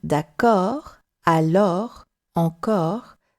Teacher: in d'accord, alors, encore, this is an opened O. Very often, when you have O and R, the O is opened.